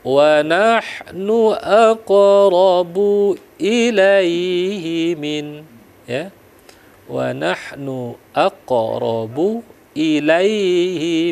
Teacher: lalu waahnu aqobu kembali lagi kita dihadapkan dengan hukum qalqal QQ karena dia di tengah-tengah artinya qalqalanya kecil jadi dilembutkan saja ya karena dia sugro lembut ya